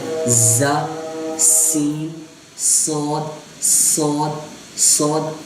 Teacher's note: ز، سین، صا، ان تینوں کا مخرج ہے جب زبان کی نوک اوپر اور نیچے والے جو آگے والے 2 دانت ہیں ان کے پیچھے لگے